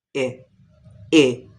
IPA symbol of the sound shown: i